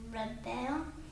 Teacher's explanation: We chop after the B. The accent is on this first syllable.